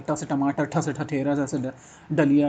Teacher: वत्सर्य कटक और कठोर तालु के बीच उच्चारित होते हैं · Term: मूर्धन्य व्यंजन